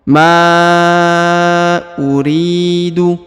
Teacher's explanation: bacaan and bacaan panjang Li harakat yang ini ya Ma uriu huruf ri dipanjangkan dua harakat karena di depannya terdapat ya sukun atau ya mati